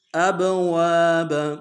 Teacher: واو کے ساتھ الف مدہ ہے ایک مقدار میں کھینچیں گے، با کو رم سے ادا کریں گے۔